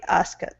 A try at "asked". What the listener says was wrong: Now that last word here is pronounced asked. Instead of asked, asked, with the T sound at the end. Okay, give me a T at the very end. Asked.